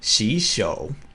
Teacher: the first word will change to the second tone